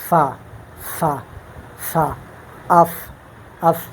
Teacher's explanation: ये जो है नीचे होंठ का शकम और सनाया उलिया का किनारा।